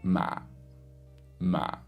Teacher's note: it starts in the middle goes down to the bottom and there's like a croakiness to it we call this the zombie tone so think of a zombie